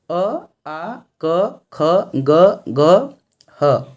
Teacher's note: कंठ्य से उच्चारण या उच्चारित होने वाले जो अक्षर हैं, वर्ण हैं, वे कौन कौन हैं, अ आ क ख ग घ ह